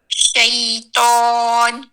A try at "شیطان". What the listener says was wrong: دیکھیے آپ نوک پہ زور لگا رہی ہیں. اب جب آپ استاد شاکرہ کی سن رہی تھی آپ کو اسے محسوس ہو رہا تھا والصیف میں وہ کر رہی ہے والصیف نوک بنا رہی ہے.